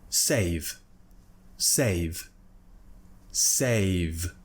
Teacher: when we have this voiced or any voiced consonant at the end of a word, you will find that it becomes a mixture of unvoiced and voiced. We just voice it less.